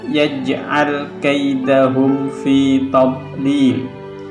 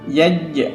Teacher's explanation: ada pantulan sedikit disebut dengan Qolqolah Sugro